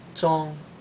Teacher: First tone is a high tone. You want to keep it high